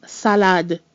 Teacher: both of those A's have equal weight and they're both pronounced a also the D in the French word salad is distinctly pronounced